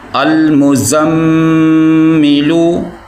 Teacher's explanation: अल मुज़म्मिलू, मीम को ज़ा के साथ मिलाना है और ज़ा को मीम के साथ मिलाना है। मीम के ऊपर गुन्ना भी किया जाएगा।